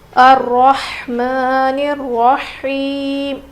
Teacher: ہا کی آواز بالکل ظاہر ہونی چاہیے، رو موٹا پڑھیں گے، کھڑا زبر ہے میم کے اوپر، الرحمن الرحیم. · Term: بڑی ہا